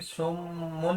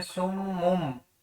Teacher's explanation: अब साकिन के बाद बा आ रहा है तो हमने नून तनवीन या नून को मीम में बदल देना है · जैसे कि अब ये नून साकिन है, यहाँ पे बा आ रहा है, तो ये छोटा सा मीम, तो हमने मीम को नून के साथ नहीं पढ़ना, हमने मीम को मीम के साथ पढ़ना है। मीम बादी, इकलाब की डेफिनेशन है नून साकिन और तनवीन के बाद हरफ बा आ जाए।